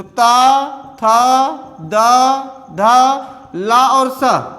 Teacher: इनका उच्चारण स्थान क्या है? दंत है।